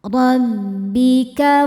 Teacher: Ra dibaca tafkhim sebab berharokat fathah. Dibacanya tebal.